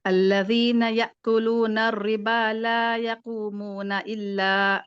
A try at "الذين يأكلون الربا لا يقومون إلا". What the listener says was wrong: ہاں یہاں پہ بھی نا اللہ، یہاں پہ بھی آپ مد دے رہی ہیں. تو یوزلی ایسے ہو رہا ہے، جہاں کہیں 2 حرکت آ رہے ہیں نا وہاں پہ 3-4 تک چلا جا رہا ہے. تو وہ آپ تھوڑا نوٹ کر کے پریکٹس کریں آپ جب بھی پڑھ رہی ہوں.